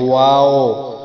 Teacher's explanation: واو یعنی دونوں ہونٹوں سے یہ پڑھا جاتا ہے، ان کو ہونٹوں کو گول کیا جائے گا